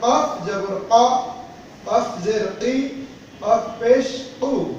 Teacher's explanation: কফটা এটি গলার ভিতর থেকে উচ্চারণ হবে